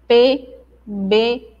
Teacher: Aí, de acordo com o ponto de articulação, ou seja, quais partes da nossa boca, da nossa boca que se tocam ou que se articulam, aí elas recebem nomes diferentes. Bilabiais são pronunciadas pelo contato dos lábios, lábio superior e lábio inferior.